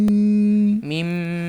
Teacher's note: মিম দুই ঠোঁটের শুকনো জায়গা থেকে